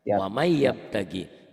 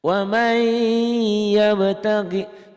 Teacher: Ditulisnya ada bunyi nun matinya, ada bunyi N-nya. Dibacanya bunyi N-nya hilang. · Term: idgham bi gunnah